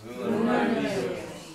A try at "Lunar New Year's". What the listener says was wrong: New Year's 따로따로 하지 마세요. 왜냐면 주로 한국 학생 할 때 새 귀처럼 들리는 거예요. New Year's 말고요. New Year's. 여러 말씀 무조건 붙이세요. New Year's.